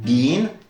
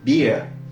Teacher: lorsqu'il est censé prononcer le son /i:/, suivi d'un R, il prononcera plutôt /ɪə/